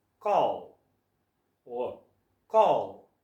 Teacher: we make the dark L Sound by moving our tongue towards the back of our mouth the sound is coming from around here call call call try